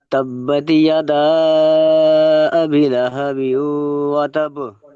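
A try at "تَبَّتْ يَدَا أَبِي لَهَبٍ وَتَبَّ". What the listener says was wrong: যাই হোক, আবি টানাবে একটা, একটু এখানে দেখবেন, ঠিক আছে এইটা।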